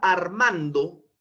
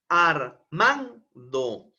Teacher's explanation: la palabra en sus sílabas integrantes y tendré ar Man do Pero cuál de estas sílabas es la que tiene una mayor entonación de voz una mayor vocalización un mayor impulso de voz es la sílaba man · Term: acento